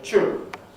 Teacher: This is where a yod follows a T or a D, an alveolar plosive, and out of T you get ch. You get an affricate, an ordinary ch affricate. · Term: coalescence